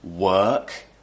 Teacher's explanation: the r is replaced with an ER sound